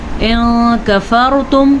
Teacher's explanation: ان کفرتم یہ آ گیا جناب ہمارے پاس نون ساکن اور اس کے بعد حروف اخفا میں سے کاف. تو نون کو ہم چھپائیں گے اور کسی حد تک غنہ بھی کریں گے. ان کفرتم را کو پور پڑھنا ہے کیونکہ را ساکن سے پہلے زبر ہے.